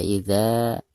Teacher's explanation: Iza disini harus dipanjangkan dua harokat Kenapa karena ada harkat fachrizal lalu di depannya ada Alif sukun